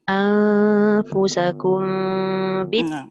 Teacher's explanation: Dekat mim bertemu ba tu, dengung sikit.